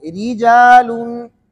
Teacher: ایک را کے نیچے زیر ہے تو را باریک پڑھیں گے